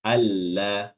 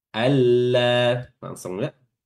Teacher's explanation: Jadi nggak ada ditahan, nggak ada juga suara dari hidung. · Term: idgham bila gunnah